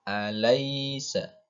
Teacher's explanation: Harus diakhiri huruf i, tidak boleh huruf e. Tidak boleh alaisa.